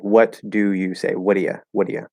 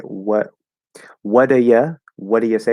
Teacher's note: We're reducing do to da.